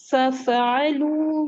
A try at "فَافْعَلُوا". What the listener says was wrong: فف نہیں، ففعلوا. قلقلہ نہیں کرنا ہے فا میں.